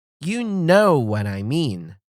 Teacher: Stress on know and mean.